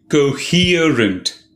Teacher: three syllables the second syllable is stressed coherent it means to be logically connected and consistent when the